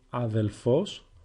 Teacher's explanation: You might also hear people pronounce it αδελφός with lambda.